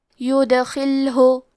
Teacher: حرف الخاء کی ادائیگی حلق کے اوپر والے حصے سے ہے، خاء حروف تفخیم میں سے ہے، تو ہمیں خاء کو موٹی آواز میں پڑھنا ہے۔ یہاں لام ساکن ہے تو ہم لام کو جزم سے پڑھیں گے، آخری میں حرف الہاء پہ پیش ہے تو ہمیں پیش کو ظاہر کرنا ہے۔ · سیئاتہ ویدخلہ، کلمت یدخلہ میں حرف دال پہ جزم ہے، کیونکہ دال بھی حروف القلقلہ میں سے ہے، تو ہم یہ حرف کو ہلاتے ہوئے یہ کلمہ کو پڑھیں گے